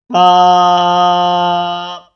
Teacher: سامنے والے اوپر کے دو دانتوں کے اندرونی کناروں سے نرمی سے لگا کر باریک آواز میں پڑھیں گے